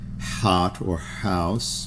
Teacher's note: A semivowel, that which with such impact has an audible sound as, all right, well, the semivowels in modern English would be perhaps the rear, the H sound, you know, where the mouth is open, but there's the fricative sound of the air in the back of the throat, like the H, or the H, as in hot or house, you know.